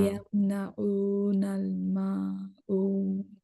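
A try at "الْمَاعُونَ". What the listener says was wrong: আমি গড়পড়তায় সবার একটা জিনিসে উইকনেস দেখছি, সেটা হচ্ছে আইনের উচ্চারণ। আইনের উচ্চারণ কিন্তু আমার খুব একটা পছন্দ হচ্ছে না। সো একটু আইনের উচ্চারণে কষ্ট দেন। মানে এই যে মাউন না, মাউন, মাউন। তারপরে হচ্ছে ইয়ামনা, ইয়ামনাউন, হ্যাঁ? তো যেসব জায়গায় আইন আছে, আইনের উচ্চারণ ভালো করতে হবে।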